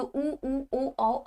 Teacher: ठीक है, व्रतमुखी की बात हो गई तो जिसमें आपका मुंह व्रत के रूप में हो जाए या जिसमें आपके होठ जो है वो गोल हो जाए